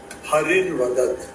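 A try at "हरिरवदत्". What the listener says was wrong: Hari Ravadat. Hari Avadat will be Hari Ra, not Hari. Hari Ravadat.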